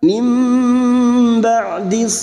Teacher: membalik seperti bertemu mim namun siap membunyikan huruf ba dan mendengung selama tiga harakat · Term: iqlab